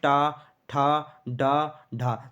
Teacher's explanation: तो जब हम टा वर्ण के वर्ग के जो वर्ण बोलेंगे वो हमारी जीभ उसमें क्या होगी, ऊपर टच होगी, मूर्धा से टच होगी, यहाँ से टच होगी। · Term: मूर्धन्य व्यंजन